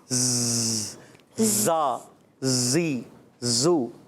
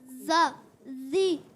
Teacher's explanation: जबान आपकी ऊपर न लगे, दोनों दांत मिलेंगे. जैसे जहाज कैसे जाता है ज़्ज़, आवाज़ आती है ना, दोनों हम दांत मिलाएंगे तो आवाज़ आएगी. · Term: सीटी